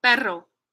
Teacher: so that's a Trill in the middle